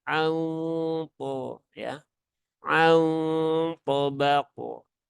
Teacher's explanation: Ikhfa akrob ya, ikhfa yang dekat. Nah, maka samarnya paling tinggi dan dia hurufnya tebal. Ikhfa yang berhubungan dengan huruf tebal maka dengungnya juga ditebalkan.